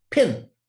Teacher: you cannot pronounce the p in pin over time right it's just an instantaneous explosion of sound